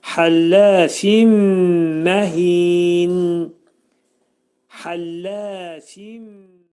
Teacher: Fində isə həlləfində isə burada nun səsinin biri mimə dəyərək idğam olur